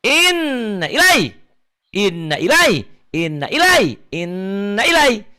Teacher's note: N-nya ditahan, A-nya dilepas.